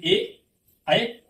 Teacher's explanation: ए जो है आपका बोला जाता है कंठ तालु से